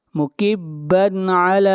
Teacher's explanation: مکبن علی، بن علی، یہاں پر تنوین کو ظاہر کر کے پڑھیں گے، اس لیے کہ تنوین کے بعد اگلا حرف عین ہے، اور عین حروف حلقی میں سے ہے۔ مکبن علی، لام کو کھینچ کر پڑھیں گے ایک الف کے برابر، اور اس مد کو مد اصلی کہتے ہیں۔